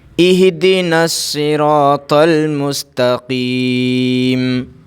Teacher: یہاں پر دیکھیے یہ الف بھی نہیں پڑھا جائے گا، یہ بھی نہیں، اور یہ لام بھی نہیں، یہ دونوں الف لام نہیں پڑھا جائے گا، اس لیے کہ صاد کے اوپر تشدید ہے